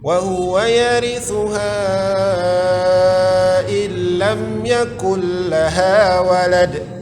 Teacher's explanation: Yakul lam yakul laha, mad asli walad. Walad itu qalqalah kubra karena kita berhenti atau waqaf.